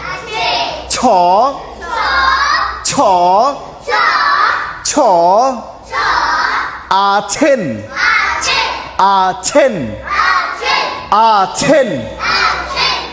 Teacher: ছ যখন বলবো আমাদের অনেক বেশি বাতাস বের হবে।